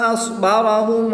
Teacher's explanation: صاد ساکن ہے تو اس کی ادائیگی کا خاص خیال کرتے ہوئے اس کو پر یعنی موٹا پڑھیں گے